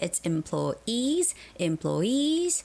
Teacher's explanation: employees has the stress at the very end